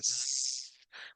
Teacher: La Z en inglés tiene una como vibración, como que si fuera un zumbido